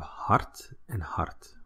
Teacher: you basically don't know whether it's a D or T at the end